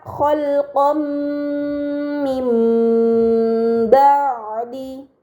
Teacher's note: nun sukun bertemu dengan huruf ba ini dinamakan iqlab maka nun sukun dibaca Mim dengan gunah yang dipanjangkan